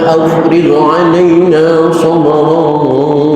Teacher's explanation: jangan sampai timbul pantulan huruf qalqalah dari ghin sehingga terdengar bacaan afrigh, jangan, karena ghin bukan huruf qalqalah